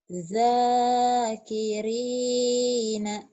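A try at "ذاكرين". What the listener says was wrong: Tuh masih za ya. Za. Jangan ja tapi za. Zakirina. Za tuh. Za. Za. Za. Zaki. Kiri. Kamu sering bacanya ini pakai Z. Z doang.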